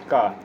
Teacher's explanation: का कंठ से बोले जाने वाला वर्ण है